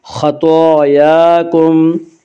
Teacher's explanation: طا بھی حروف مستعلیہ میں سے ہے، اس لیے طا کو بھی پر پڑھیں گے۔ خطایاکم، طا کے اوپر اور یا کے اوپر کھڑا زبر ہے، کھڑا زبر کو ایک الف کے برابر کھینچ کر پڑھیں گے۔ خطایاکم، طا وقف مطلق کی علامت ہے، اس پہ ٹھہرنا چاہیے۔